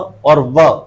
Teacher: फ और व जब बोलते हैं तो ऊपर वाले दांत और हमारे लिप्स, उन दोनों के सहयोग से ये जो साउंड है वो निकाली जाती है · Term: लेबियोडेंटल